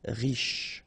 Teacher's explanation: Final E not really pronounced, so sh is the last sound.